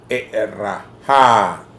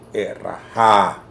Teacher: Entonces, ra sería la primera sílaba porque e y la glotal es extramétrica. Ra es la primera sílaba y ja es entonces la tónica.